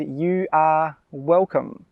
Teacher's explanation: When we say this, we really emphasize the are.